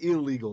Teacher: the N, it assimilates into the L and it doubles it